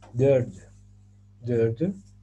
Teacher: esta T se convierte en una D para suavizar su sonido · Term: suavización de las consonantes